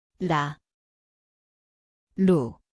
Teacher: It sounds like R/L. The place is the tongue tip, light tap.